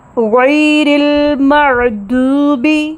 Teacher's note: اب یہاں پر آیت میں حرف ہے، آیت میں غیر المغضوب، غین جہر کا حرف ہے، جہاں سانس کا بہاؤ مکمل طور پر رک جاتا ہے، ساکن ہونے کی وجہ سے المغ یہیں پہ رک جاتی ہے سانس، تو یہاں پہ غین کی آواز کو بلند کرنا ہے، یہاں پہ پھونک نہیں دیں گے، یعنی کہ ہوا نہیں آئے گی۔